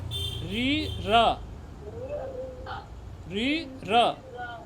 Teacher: दोनों मूर्धा से उच्चारण उच्चारित होते हैं